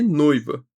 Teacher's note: E noiva, assim como em joia, a gente tem um ditongo decrescente ou i. Então, vogal, semivogal, sem nenhum traço de nasalidade.